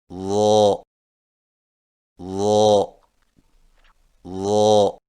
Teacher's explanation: ضا کی ادائیگی میں زبان کی نوک کو سامنے والے اوپر کے دو دانتوں کے اندرونی کناروں سے نرمی سے لگا کر اور زبان کے پچھلے حصے کو تالو کی طرف بلند کرتے ہوئے موٹی آواز میں پڑھیں